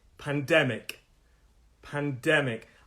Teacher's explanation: three syllables pandemic the stress is on the second syllable